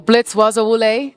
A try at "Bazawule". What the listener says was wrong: Bazawule. I didn't hear the Z though.